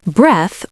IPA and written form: breθ (Breath)